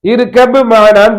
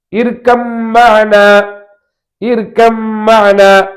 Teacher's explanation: பாவும் மீமும் ஒரே இடத்தில் பிறகுக்கிற மஹ்ரஜ், ஒரே மஹ்ரஜில் உருவாகிற எழுத்துக்கள். எனவே பாவை மீமுக்குள்ளே இணைத்து விட வேண்டும் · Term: இதுகாம் முத்தஜானிஸின்